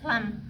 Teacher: huruf lam itu laswi, terletaknya di gusi atau lidah. Terus di pinggirnya tuh la, di janib di pinggirnya. Terus mutawasit di pertengahan.